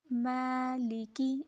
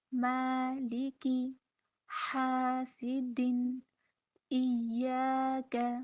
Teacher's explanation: میم بریک ہے اور میم کے ساتھ الف آیا ہے، تو اس لیے بریک حرف کے ساتھ ہے تو الف کو بھی ہم بریک ہی ادا کریں گے، موٹا نہیں کریں گے. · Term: بریک الف